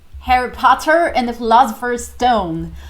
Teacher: E se aproxima um pouquinho mais do inglês americano porque ele rola os R's. É chamado de rolled R.